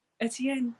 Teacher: Hers is more of a, like it's just a very breathy E sound when she says it